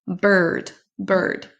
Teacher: Et là on ne va pas le prononcer. On ne prononce pas le i comme à la française. On va prononcer comme un son e.